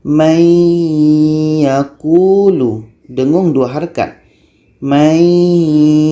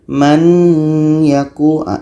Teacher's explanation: Nun mati bertemu dengan ya. Masuk nun kepada ya. Mayyakulu. Dengung 2 harakat. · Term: idgham